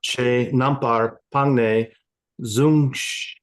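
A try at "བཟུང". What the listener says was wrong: Sung. No Z. Low tone F.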